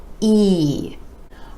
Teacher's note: our next four letters have the same vowel sound e e the sides of the lips retract just a bit for this sound and you want to give it more stretch more duration and a little more energy